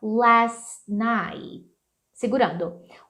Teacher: por conta desse T final, last night, que explode, vamos poder só segurar ele